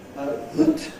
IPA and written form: ðət (that)